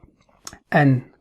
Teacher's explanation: we use the tip of the tongue as the one point, and that's the gum line of the top two incisors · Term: noon